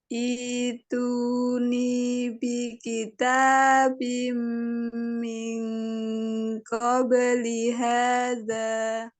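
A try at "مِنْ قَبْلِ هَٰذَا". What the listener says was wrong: Tambah tebal pada ikhfa hakiki. Min qabli hadza.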